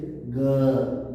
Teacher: अब सघोष में क्या होता है, स्वर तंत्रियों में कंपन जरूरी है